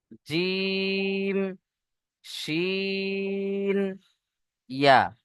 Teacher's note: জিভের মাঝখান ও তার বরাবর উপরের তালুর সাথে লেগে উচ্চারণ হয়